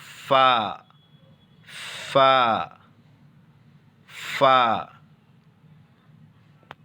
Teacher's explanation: اوپر کے دانتوں کا کنارہ نیچے کے ہونٹوں پر ملا کر کے فا ادا ہوگا